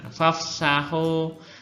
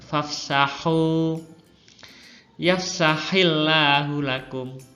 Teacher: kalau baca ha itu yang bening, nggak ada ngoroknya